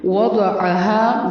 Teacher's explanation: وضعها واو کو پر پڑھنا ہے، ضاد کی آواز پر ہوگی، عین کی آواز حلق سے ادا ہوگی.